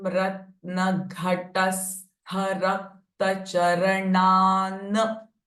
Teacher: Now Gha, Ha are again Mahaprana sound.